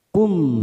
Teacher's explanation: ada mim sukun bertemu ha Idhar syafawi kita baca jelas tanpa mendengung